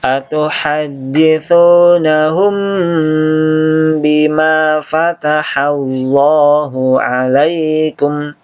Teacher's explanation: Kemudian mim ketemu ba. Ya. Ini kena hukum ikhfa syafawi. Dibaca dengung.